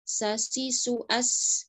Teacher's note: huruf sin, sofirnya diperjelas